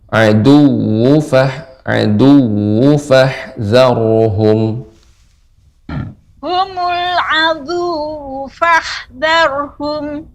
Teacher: Waw yang bertasydid ada nabar Ibu.